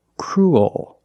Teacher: what's different is your tongue is not straight it goes a little high in the back and the bottom of the tongue expands it gets bigger to make the dark l